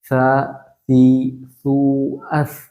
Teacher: നമ്മുടെ നാവിന്റെ തലഭാഗം നേരെ മുൻപല്ലിന്റെ തലമ തട്ടിച്ചിട്ട് ഇങ്ങനെ സി സൂ അസ് നാവ് ചെറുതായിട്ട് പുറത്തേക്ക് കാണണം